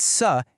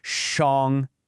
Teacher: This is what we call a retroflex consonant. You have to physically curl the tip of your tongue back toward the roof of your mouth.